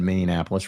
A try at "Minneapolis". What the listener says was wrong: Minneapolis. you threw an extra in Minneapolis. It's not Napolis.